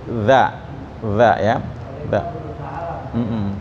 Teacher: Nah, ya harus beda, nggak boleh sama ya. Za, kalau za itu ujung lidahnya keluar gigi depan, dijepit dikit.